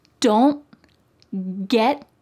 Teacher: My tongue is at the top of my mouth, like it's going to make that T shape, but I just don't let the air come out. Don't get, my tongue is stopped at the top of my mouth.